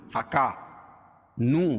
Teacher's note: فَكَانُوا لِجَهَنَّمَ، فَكَا، نو واو مدہ ہے، کا الف مدہ ہے، دونوں جگہ ایک ایک الف کے برابر کھینچ کے پڑھیں گے